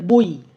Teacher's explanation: এবারে বই বইটা যে পেচ্ছি ওই ওইটা কিন্তু ও আর ই ও টা সম্পূর্ণ উচ্চারণ হচ্ছে ই টা কিন্তু অতটা সম্পূর্ণ উচ্চারণ হচ্ছে না এখানে অর্ধস্বরান্ত হয়ে যাচ্ছে